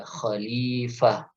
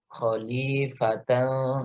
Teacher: kalau kita mewakafkan bacaan kita di tak marbutah, maka taknya dibaca ha